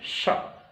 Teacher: यह स जब आप बोलेंगे तो जिह्वा की जो नोक है और तालु के मध्य में बीच में हल्का सा रिक्त स्थान, थोड़ा सा रिक्त स्थान होगा और श्वास रगड़ खाती हुई, सित्कार करती हुई बाहर निकलती है। सित्कार करती हुई बाहर निकलती है, इसलिए इसको तालव्य स कहा जाता है।